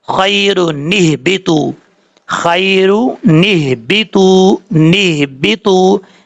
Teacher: اگر ہم پڑھیں گے ملا کے تو پھر اس کے شروع میں جو حمزہ ہے یہ اصلی نہیں ہے، اس کو چھوڑ دیں گے، سکپ کر دیں گے، اور یہاں پہ نون قطنی کے ذریعے پڑھا جائے گا